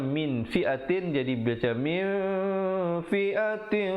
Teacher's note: Kam min, di situ ikhfa, nun mati bertemu fa.